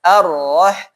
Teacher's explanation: Ro itu satu hanya dua getaran aja. Arroh. Tapi nggak boleh arroh. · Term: takrir